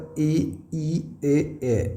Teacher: जीभ का जो अग्र वाला भाग है उससे कौन कौन से स्वर बोले जाते हैं, उन्हें हम बोलते हैं अग्र स्वर।